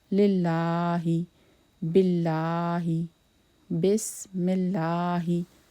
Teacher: before this Lam Zair comes, we will pronounce this Lam in Allah's name thin tone.